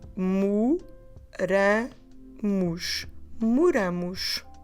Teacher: Instead of moro, moras, mora, now we change the stress. The stress is no longer on that mo syllable. · Because we're adding a syllable, that first O we have on the second letter, instead of saying O, we change into U